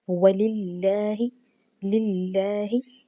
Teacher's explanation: زیر آنے کی وجہ سے یہاں پر اللہ کا نام باریک پڑھا جائے گا، ہا کی ادائیگی بھی خوبصورت انداز میں ہم نے کرنی ہے۔